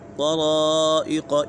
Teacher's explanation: مد کے بعد حمزہ اسی کلمے میں تو اسی وجہ سے مد متصل ہوگا